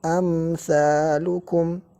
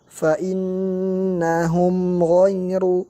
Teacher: Kita lihat mim sakinah setelahnya sa, amsalukum. Cara membacanya dengan izhar tanpa tambahan di gunnah yang ada di tubuh mim